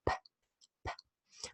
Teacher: Okay, you might remember that the sound P, this voiceless, well, I'll give you the pompous expression, the voiceless bilabial plosive. That means a sound that's produced without the humming of the vocal cords and with the help of the two lips, and it's produced by stopping the airflow and then releasing it.